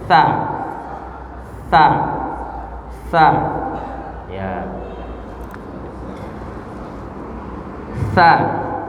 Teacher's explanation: Sekarang ujung lidah ya bertemu dengan ujung gigi seri atas ya. Ujung gigi seri atas atau berada di tengah-tengah. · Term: huruf sa